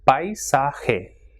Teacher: So as you can see, it has got three syllables, and when A and I are coming together, it will be stressed and it will form a syllable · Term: diphthong